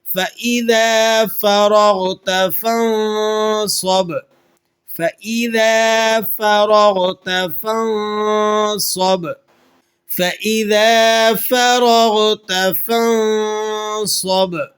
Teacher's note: را اور غین دونوں کو آپ نے موٹا کر کے ادا کرنا ہے